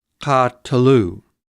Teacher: because of the metheg, this syllable is pronounced separately and long. It, in a sense, has a minor accent of its own, ka.